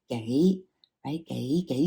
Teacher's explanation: like a mid rising or even a low Rising but definitely the gay is going to be your mid- Rising second tone